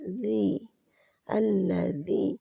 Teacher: زبان کی نوک جو ہے آگے سے زبان کا سرا اوپر والے 2 دانتوں کے کنارے سے لگتا ہے، نیچے جہاں پہ آپ کسی چیز کو کاٹتے ہیں، بائٹ کرتے ہیں اس حصے پہ جا کے لگتا ہے، لیکن زبان باہر نہیں نکلتی، نرم حرف ہے۔